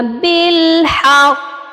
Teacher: اب قاف جو ہے مشدد کے ساتھ ہے، زیر ڈراپ کرنے کی وجہ سے ہم یہاں پر وقف کر رہے ہیں، اسی لیے ہم نے زیر کو ڈراپ کیا ہے تو قاف کو ساکن بھی کریں گے تو یہ ہوگا بالحق. یہاں پر آپ نے مضبوطی کے ساتھ شدت کے ساتھ قلقلہ کرنا ہے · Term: قلقلہ اکبر